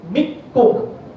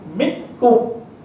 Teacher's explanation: Nun tu masuk dalam kaf. Langsung tak dengar kan? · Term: idgham